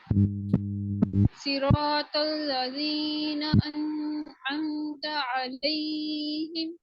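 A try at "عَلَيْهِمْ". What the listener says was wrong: हाँ, अलैहिम, इसमें ज्यादा लंबा नहीं करना है, इसको ज्यादा स्ट्रेच नहीं करना, 2 काउंट से कम स्ट्रेच होगा। अलैहिम, अलै करेंगे तो वो 2 काउंट जितना जा रहा है, ठीक है।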